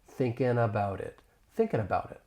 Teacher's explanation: I am going to pronounce it as a flap T. It's going to sound more like a soft D. This often occurs when the T comes between two vowel sounds, and then I can link that flap T with the beginning vowel sound in it.